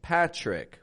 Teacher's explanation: the t is not pronounced like a regular T it comes out more like a CH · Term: ch kind of sound